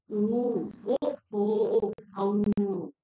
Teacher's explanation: ஓ அவ் இதெல்லாம் உதடுகளை குவிப்பதனால் பிறக்கக்கூடிய எழுத்துக்கள்